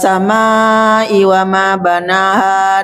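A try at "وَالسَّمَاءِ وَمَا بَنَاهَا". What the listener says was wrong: amanya panjangkan lagi, Mak. Panjangkan lagi. Ma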